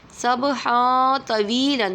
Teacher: حرف اخفا میں سے، حرف اخفا میں سے تو آ رہا ہے تو اخفا ہوگا۔ تنوین کے بعد دو زبر کی تنوین ہے، اس کے بعد تو آ رہا ہے تو اخفا ہوگا، اس لیے غنہ کریں گے